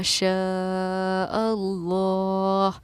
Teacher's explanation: حمزہ اللہ میں مل گیا ہے تو اسی لیے لفظ اللہ کے لام کو ہم نے پوری یعنی کہ موٹا پڑھا ہے، کیونکہ لفظ اللہ کے لام سے پہلے والے حروف پر اگر زبر یا پیش ہو تو لفظ اللہ کے لام کو ہم پوری یعنی کہ موٹا پڑھتے ہیں. اسی لیے ہم نے اس کو پڑھا شاء اللہ. · کیونکہ حروف مدہ کے بعد حمزہ اگر اسی کلمے میں ہو، یعنی دونوں سیم الفاظ میں ہی ہوں، تو حروف مدہ ہمارا مد متصل کہلاتا ہے، اور اس کو 4 الف کی مقدار کے برابر ہم کھینچ کر پڑھتے ہیں